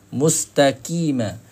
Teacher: Huruf qaf akan ada pangkal lidah kita akan rasa terik bila kita baca mustaqi. Sentuh dengan pangkal lidah.